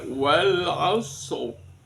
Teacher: ro yang disukun ini berhukum atau punya hukum namanya ro yang dibaca tafkhim tebal